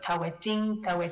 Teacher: some kind of vowel deletion between coronal consonants so when we have this suffix that starts with the alveolar